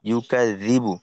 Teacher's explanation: আর ইউকাযিবু, জাল এইটা জিহ্বাতে রাখতে হবে হালকা করে, জিহ্বার আগা সামনের উপরে দুই দাঁতের আগার সঙ্গে লাগবে।